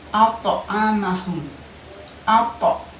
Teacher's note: Ada nabrotan qawiyatan di sini, ada pantulan yang kuat ketika kita mengucapkan huruf to